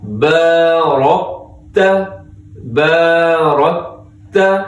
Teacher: را موٹا ہے، کاف کو باریک رکھنا ہے